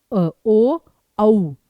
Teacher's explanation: कंठ और होंठ दोनों का प्रयोग होना, जैसे कि ओ औ, तो उसमें होंठों का भी प्रयोग होगा और गले का भी प्रयोग होगा। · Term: कंठोष्ठ